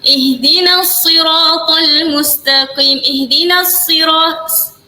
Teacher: Sad dengan sin sama-sama ada keluar angin. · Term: sifat sofir